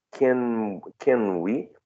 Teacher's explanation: The n might be a little bit labialized. There's some sort of bilabial feature affecting the n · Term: regressive assimilation